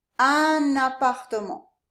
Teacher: Usually this un has a nasal sound, but when we connect it to this A, we actually do pronounce the N. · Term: liaison